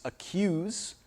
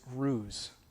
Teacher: So not including that y sound is yod dropping